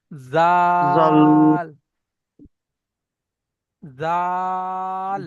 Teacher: জাল, জি, জিহ্বার আগাটা, জিহ্বার আগা সামনে উপরে দুটি দাঁতের আগার সঙ্গে লাগালে জাল উচ্চারিত হবে।